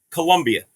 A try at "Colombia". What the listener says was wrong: Okay, it's Colombia with an O. Colombu. BIA, not a U. Colombia is the university, not Colombia.